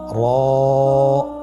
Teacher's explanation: মোটা করে উচ্চারণ করব এবং র হরফটি এক আলিফ টেনে পড়ব